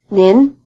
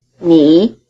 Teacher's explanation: the polite word is in the rising tone mean while the plain word is in the low tone me